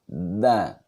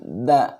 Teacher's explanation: Tempat keluarnya punggung, ujung lidah bertemu pangkal dua gigi seri muka atas bagian dalam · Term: huruf dal